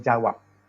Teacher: Beh ketika dia muncul di awal tuturan, dan fonem itu direalisasikan sebagai peh ketika muncul di akhir tuturan. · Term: alofon